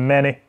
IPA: e